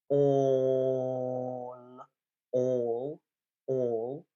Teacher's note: you listen all all all um that's not a d thong that's a mon thong it's one vowel sound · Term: monophthong